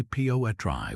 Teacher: We say poetry with a strong beat on that first syllable.